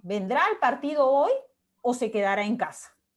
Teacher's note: la primera parte es ascendente y la segunda es descendente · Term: interrogativa disyuntiva